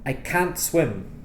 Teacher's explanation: most native speakers don't pronounce the T at the end of the negative